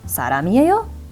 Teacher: Just go ahead and raise that intonation in your voice.